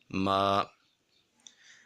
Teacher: اب یہاں پہ میم کے اوپر کھڑا زبر آ رہا ہے تو میم کو 1 الف کے برابر لمبا کر کے پڑھیں گے، لیکن اس چیز کا خاص خیال رہے کہ جب ہم نے میم کے اوپر کھڑا زبر کو ادا کرنا ہے تو آواز ناک میں نہیں جانی چاہیے